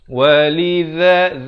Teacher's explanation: Ada bunyi hamas, ada bunyi angin di sikit di hujung itu. Walidha, za di hujung lidah